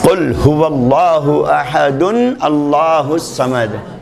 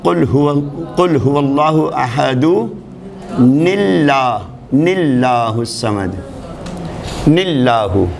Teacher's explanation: تنوین کا نون ہمیشہ اگر ملا کر پڑھنا ہے تو زیر کے ساتھ ملا کر پڑھا جائے گا۔ تنوین کا نون ساکن ہے لیکن جب اگلے لفظ سے ملا کر پڑھیں گے اس کو تو زیر لگا کر پڑھیں گے